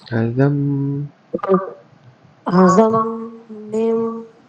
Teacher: Mim matar dia idgham maal ghunnah kamil. So kena rapatkan bibir dan dibaca dengung dua harakat sekali.